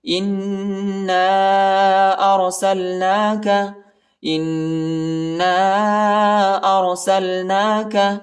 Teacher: نون کے بعد جو الف ہے اس کے اوپر جو ہے چھوٹا مد ہے، اس کو تقریباً 2-3 سیکنڈ تک کھینچیں گے